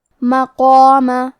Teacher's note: کلمت مقامہ میں قاف کی ادائیگی زبان کے جڑ اور تالوں کے نرم حصے سے ہے. قاف حروف تفخیم میں سے ہے تو ہمیں قاف کو موٹی آواز میں پڑھنا ہے، اور اس کے بعد مد الف ہے تو ہم مد الف کو بھی موٹی آواز میں پڑھیں گے.